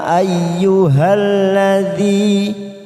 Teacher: munfasil karena ada Mad bertemu dengan Hamzah bila ini kalimat ya kita panjangkan 5 harakat atau lima ketuk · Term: Mad Jaiz munfasil